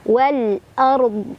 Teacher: Nah kemudian dodnya tetap dibaca dan tetap kelihatan sifat yang khas dari dod yaitu istitolah, ada suara-suara memanjang dari dod ya.